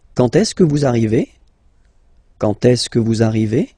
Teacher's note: don't be afraid to raise your voice a little bit at the end.